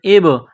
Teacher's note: با ساکن ہے، حروف قلقلہ ہے تو یہاں پر قلقلہ کریں گے